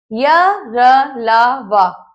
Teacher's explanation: जिन व्यंजनों का उच्चारण करते समय जीभ मुख के भीतर किसी भाग को पूरी तरह से स्पर्श नहीं करती है, उन्हें अंतस्थ व्यंजन कहते हैं।